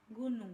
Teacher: konsonan hambatan velar yaitu k&g